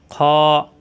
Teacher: খ টা কণ্ঠনালীর শেষ অংশ থেকে উচ্চারণ খ মোটা হবে